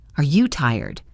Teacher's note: for a yes no question. Your voice rises.